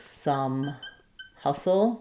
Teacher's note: Both have the schwa, the stressed schwa vowel.